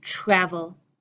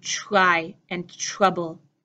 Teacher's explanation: the T and R in English is often reducing to become the sound of CH. Instead of travel, I'm saying travel.